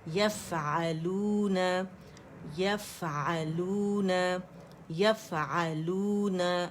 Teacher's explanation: فا میں رخاوہ بھی ہے، ہمس بھی ہے، ٹھیک ہے، سکون کے ساتھ واضح ہو گیا